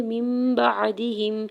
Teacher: ساتھ ملاتے ہوئے یہاں پہ اقلاب کا قاعدہ ہو رہا ہے، نون ساکن کی آواز کو میم میں بدل کے پڑھیں گے